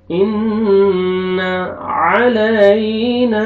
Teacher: आइन पढ़ेंगे अपने मखरज से अदा करेंगे ताकि हमजा में मिक्स ना हो आवाज। अलई, या लीन, या साकिन से पहले फतहा, नरमी से अदा करेंगे।